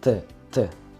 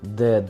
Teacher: Т звучит очень глухо, а звук Д действительно резонирует. От него прям шум в ушах. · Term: звонкие согласные